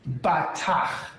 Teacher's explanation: So in this case, we have a long vowel under the first syllable. So the accent is normal, which means that the accent is on the last syllable.